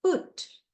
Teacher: half closed and half open all tall okay then oo sound short o back rounded vowel between close and half close put okay then long ooh sound back close rounded vowel fool · Then oo sound, short oo, back, rounded vowel between close and half close